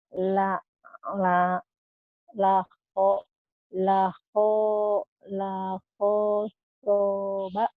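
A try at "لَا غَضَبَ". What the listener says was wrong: Yang panjang lahnya doang. Bukan ho tapi itu go. Go. Lahnya tapi panjang. La godoba. La godoba.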